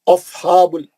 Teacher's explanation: हा पे खड़ा ज़बर 2 रकत मरकजी हलक से पढ़ेंगे हा को